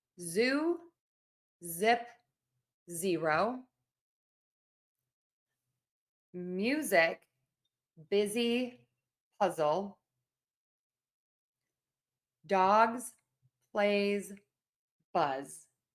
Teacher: So for S, we have no voicing, no vibration of the vocal cords. And for the Z, the voice box is on and moving. And we have vibration. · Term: Z sound